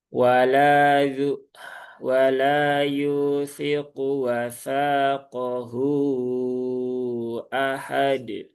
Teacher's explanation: Jangan sampai ada penambahan huruf hamzah ya di di belakang setelah huruf dal yang sukun.